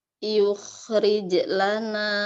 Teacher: tebalkan kho sukun karena diawali dhammah